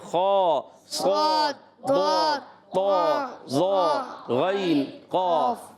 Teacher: حروف مستعلیہ میں زبان کی جڑ اوپر جاتی ہے اس لیے موٹے ہوتے ہیں